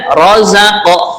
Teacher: qaf kita tunaikan qalqalahnya